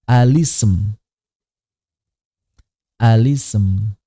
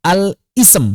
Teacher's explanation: Jadi kalau misalnya ada lam al, ya, ketemu hamzah wasal, maka cara baca lamnya itu dikasrohkan.